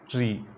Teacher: री का उच्चारण हम मूर्धा से करते हैं, आपकी जीभ मूर्धा में स्पर्श करती है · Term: मूर्धन्य स्वर